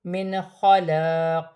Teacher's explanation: قاف حروف قلقلہ میں سے ہے، ساکن ہونے کی صورت میں وقف کی صورت میں قاف میں تھوڑا سا قلقلہ پیدا ہوگا